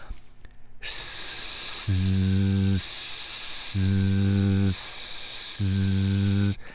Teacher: I didn't stop the breath I just did an S and I turned on my voice box nothing changed my lips didn't change my tone didn't change and